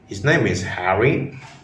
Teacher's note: with a slightly rising tone that indicates you are shocked or surprised by this fact. So just by varying the pitch, we can communicate very different things even if the words themselves stay the same.